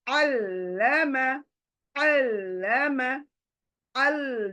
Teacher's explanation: लाम दो बार आना चाहिए, पहले बार फर्स्ट लेटर के साथ, दूसरे बार अपनी हरकत के साथ